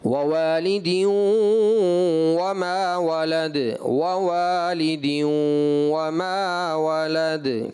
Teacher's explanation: वाऊ जो है हरफ शफविया में से आता है, ठीक है, दोनों होंठों की गोलाई से अदा होता है